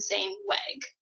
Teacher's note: instead of saying that L sound in leg, they're replacing that with a W and saying weg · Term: gliding